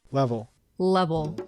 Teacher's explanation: A dark hill is where the back of the tongue is moving up towards the soft pallet and it gives it a a sort of oish sound.